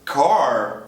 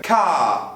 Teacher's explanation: se você está pensando em inglês britânico e não tem uma vogal depois do seu R, você vai ignorá-lo e muito provavelmente vai alongar o som da vogal que veio antes dele. Não só quando ele estiver em posição final, pode ser no meio da palavra.